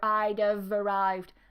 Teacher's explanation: I keep the V because there's a vowel.